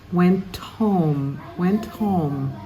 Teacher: you want to take the final T and push it on the next word